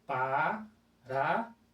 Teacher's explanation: Então eu tenho uma semivogal, uma vogal e uma semivogal. Então não se separa os tritôgos de acordo com a nossa regrinha básica. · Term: tritongo